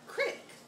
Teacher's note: actually aside from the connotations just listen to the word critic there's so many consonants and the vowels in it are so short and sharp and high-pitched